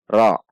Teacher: Tidak dengan membulatkan bibir, namun dengan menaikkan pangkal lidah karena tafhim.